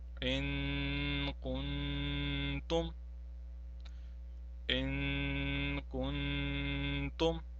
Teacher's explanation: after Nun Sakin we have Qaf. Now Qaf is not a member of the groups of Harufi Yarmalun or Harufi Halki or Ba. Therefore, we have to prolong the Nun Sakin here. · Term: ikhfa